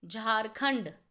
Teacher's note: झारखंड जब हम बोलेंगे तो ख के बाद ण की आवाज़ है